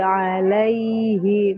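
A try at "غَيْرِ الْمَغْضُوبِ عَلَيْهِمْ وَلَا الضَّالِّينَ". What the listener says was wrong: Ya Ibu, huruf ghain jangan qalqalah ya. Ghairil maghdubi 'alaihim waladdallin.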